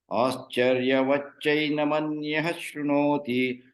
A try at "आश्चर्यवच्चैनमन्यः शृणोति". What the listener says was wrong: Anyaha, don't say. Anyah shrunoti. Visarga shakara should happen.